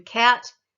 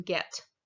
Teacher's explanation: the velar back there towards the um very back kind of top of your mouth behind the soft palate the velum